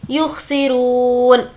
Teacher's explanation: रू को खींचेंगे, वाव मद्दा है और नून पर जज़म दे देंगे।